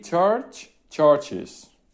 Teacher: con un sonido de la I corta y una Z